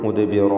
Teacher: വഖഫ് ചെയ്യുമ്പോൾ മുദ്ബിറ എന്ന് അലിഫിന്മേൽ വഖഫ് ചെയ്യണം. അലിഫിലും തഫ്ഖീം ഉണ്ടായിരിക്കുന്നതാണ്. വഖഫ് ചെയ്യാതെ ചേർത്ത് ഓതുമ്പോൾ മുദ്ബിറൻ വലം യുഅഖിബ്, മുദ്ബിറൻ വലം യുഅഖിബ് എന്ന് തൻവീനിനെ വാവിലേക്ക് ലയിപ്പിച്ച് മണിച്ചുകൊണ്ട് ഉച്ചരിക്കുക.